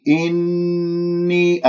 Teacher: النون المشددة الغنة أكمل ما تكون من غير نبر